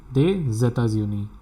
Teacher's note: Nous venons des États-Unis because of the liaison rule. S will get connected with this E